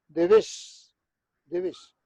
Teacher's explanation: E o Z final, mesmo aqueles que no galego medio e oriental pronuncian o Z do castellano, como final de palabra sempre é sibilante